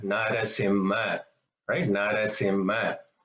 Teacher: The first na, which is written as na in English, it's a flat na. The tongue is flat.